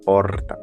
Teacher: a pronúncia predominante na capital paulista seria porta, marcada pelo uso do TEP. Por outro lado, aqui na região de São José do Rio Preto, essa mesma palavra é pronunciada como porta marcada pelo TEP retroflexo, popularmente conhecido como R.